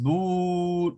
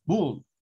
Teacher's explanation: este es un sonido de una u pero es más corto